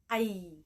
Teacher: wastiyah ghoriyah atau disebut juga dengan medio palatal. Nah, hurufnya ada 1, yaitu ya, dan akan berbunyi ai.